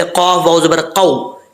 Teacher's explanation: वाव मद्दा और वाव लीन में फ़र्क ये है कि वाव मद्दा हो तो उसको लंबा किया जाता है, वाव लीन हो तो उसको लंबा नहीं किया जाता।